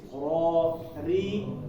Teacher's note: ketika dia fathah atau dhammah, dia dibaca tebal ya. Bacanya tafkhim. Nah, ini ada pun kasroh, dia dibaca tipis